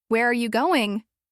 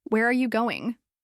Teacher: But if you use a falling intonation, Where are you going? it sounds natural and calm, like a real question.